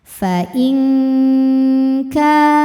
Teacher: bunyi nun sukun samar-samar menuju makhraj huruf kaf yaitu pangkal lidah disertai dengungan. Dengungannya besar karena kaf ini makhrajnya jauh dari nun. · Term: ikhfa